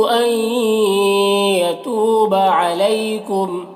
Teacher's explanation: आई यहाँ पर इदगाम नाक़िस हो रहा है, आई में गुन्ना के साथ में पढ़ेंगे।